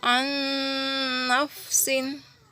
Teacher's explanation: nun sukunnya dimasukkan terlebih dahulu ke huruf nun yang berharokat, didengungkan lalu ditahan 2 harokat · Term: idgham bil gunnah